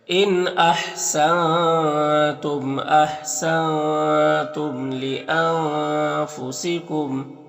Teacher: نون میں اخفا ہوگا، میم میں اظہار شفع بھی ہوگا